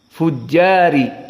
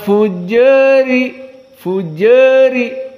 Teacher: condong kepada kasrah namun sedikit diistilahkan juga dengan Al imalah asugro makna imalah condong kepada kasrah tetapi sedikit